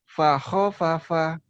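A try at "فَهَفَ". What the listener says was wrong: Bukan begitu penekanannya nih. Tuh nggak ada yang panjang kan? Paho papa gitu. Nggak ada yang panjang ya. Ho-nya jangan paho papa jangan gitu. Paho papa gitu.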